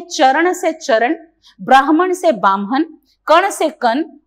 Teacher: जो अण का उच्चारण है वो न में बदल जाता है